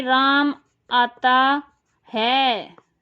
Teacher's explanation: तो अब है पे ज्यादा प्रयोग कर लिया बल का, इस तरह से होता है वाक्य बलाघात।